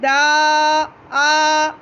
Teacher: जब मैं आ वाले साउंड में आई, दा आ ये वाला साउंड जब मैंने बनाया तो मेरी वहाँ ज़ुबान जो लगी हुई थी वो हट गई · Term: दाल